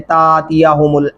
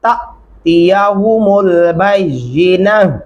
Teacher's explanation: इसको आप झटके से पढ़ेंगे। अलीफ के ऊपर जब भी जज्म आए वो हमजा की आवाज में पढ़ा जाएगा, झटके से पढ़ेंगे।